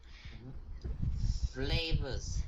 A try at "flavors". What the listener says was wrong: Yeah, flavors or flavors are all good or both good.